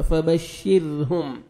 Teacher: یہ میم ساکن کا اخفا ہے, یہاں پہ آپ نے نوز میں ساؤنڈ لے کے جانا ہے